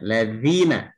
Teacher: Jadi ujung menempel ke gigi di atas dan dibaca panjang mad asli.